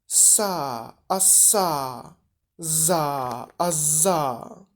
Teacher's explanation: Spółgłoski alveolarne, dziąsłowe, alveolar, na styku języka i dziąseł.